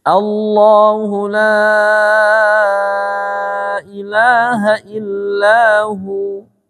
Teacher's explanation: Jadi la-nya dibaca panjang lebih dari 2 harokat.